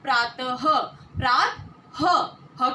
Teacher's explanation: विसर्ग का उच्चारण जब हम करते हैं तब अ के बाद ह की आवाज सुनाई देती है। अ के बाद ह की आवाज सुनाई देती है।